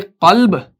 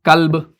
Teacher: قاف کو ہم موٹا پڑھتے ہیں قاف, کاف کو باریک پڑھتے ہیں کاف